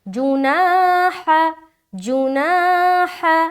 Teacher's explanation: ہا کو نہیں کھینچنا، جیم کو نہیں کھینچنا، بیچ میں کھینچنا ہے